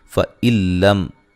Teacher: نون ساکن کا ادغام بلا غنہ ہے، غنہ نہیں کریں گے